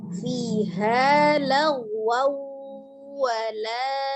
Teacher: bi gunnah, dengan dengung, maka ditahan 2-3 harokat, suaranya dimasukkan ke rongga hidung. Setiap gunnah suaranya masuk ke rongga hidungnya, al-khaisun.